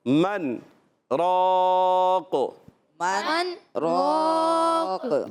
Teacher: اب یہاں پر جو ہے سکتہ ہوگا، اس وجہ سے جو ہے سکتے کی وجہ سے من، یہاں ادغام نہیں کریں گے، ادغام بلا غنہ بھی نہیں ہوگا، نون کو ظاہر کرتے ہوئے را کو الگ کر رکھیں گے